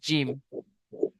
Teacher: জিবের মাঝখান সেই বরাবর উপরে তালুর সাথে লাগিয়ে উচ্চারিত হয় জিম